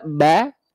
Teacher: Ketika kita buka ba, karena dia berarti udah masuk ke harokat fathahnya. Nah, ketika vokal A dilafalkan, kenapa dia tetap vokal A? Karena pangkal lidah kita nggak naik.